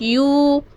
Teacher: یوں پہ واو مدہ ہو رہا ہے کیونکہ واو ساکن سے پہلے پیش ہے